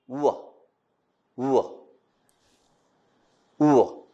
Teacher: The tongue immediately glides away to the positions of the following vowel. The lips are closely rounded. The vocal cords vibrate so that the voice is produced. · The back of the tongue is raised in the direction of the soft palate to a point between closed and half-closed vowel. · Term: voiced labio-velar semi-vowel, labio-velar semi-vowel